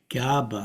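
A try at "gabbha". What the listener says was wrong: Can you get that very distinct double B and as for it, gabba. Gabba. Yeah, gabba. There's the one that's the Sanskrit garbha, meaning literally a womb. So, and in Pali by regular phonetic mutation becomes gabha.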